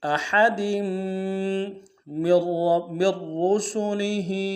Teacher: دال کے نیچے تنوین ہے، تنوین کو آگے میم کے ساتھ ملانا ہے، غنہ کرتے ہوئے ملائیں گے۔